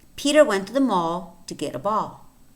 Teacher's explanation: Peter mall and ball are the words that are stressed